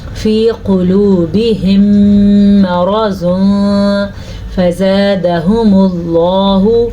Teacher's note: اب یہاں پہ میں نے اخفاء کا قاعدہ ادا کیا کیونکہ تنوین کے بعد فا حروف اخفاء میں سے آیا ہوا ہے · لفظ اللہ کو پر پڑھیں گے کیونکہ لفظ اللہ سے پیچھے والے حرف کے اوپر پیش ہے. مرض، را کو پر پڑھیں گے، را پہ زبر ہے.